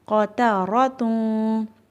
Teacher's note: ان دونوں موٹے حروف کے درمیان تا باریک حرف آ رہا ہے تو ہم لوگوں نے اس بات کا دھیان رکھنا ہے کہ تا کو ہم نے موٹا نہیں پڑھنا